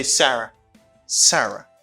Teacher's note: it's a falling intonation because you lower your voice at the end of this sentence · At the end of this, you lower your voice. It's a falling intonation.